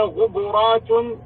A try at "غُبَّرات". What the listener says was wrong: لا شدد الباء، غبرات.